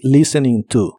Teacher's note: No se pronuncia la T de listening.